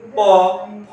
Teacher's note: এগুলো উচ্চারণের সময় দেখো আমাদের এক ঠোঁটের সাথে আরেকটা ঠোঁট লাগতেছে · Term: ওষ্ঠবর্ণ